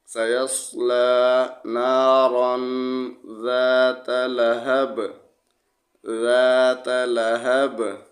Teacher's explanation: سیصلی نارن ذات، لام زبر لا، ہا زبر ہا، لہب، با 2 زیر بن، لہب۔ وقف میں با کو ساکن پڑھیں گے تو با پہ قلقلہ کریں گے